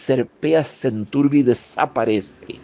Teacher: Nos dice: y el camino que serpea y débilmente blanquea se enturbia y desaparece. Machado usa la sibilante abierta alveolar fricativa, la S